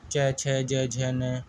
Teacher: तालव्य व्यंजन, जिन वर्णों का उच्चारण तालु से होता है